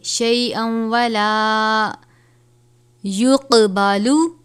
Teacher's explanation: ولا، اب یہاں پر ہم عن نفس شیئا ولا، تنوین ہے، حرف یرملون میں سے واو آیا ہے، تو یہاں پر ہم اس کے آواز کو غنہ کر کے پڑھیں گے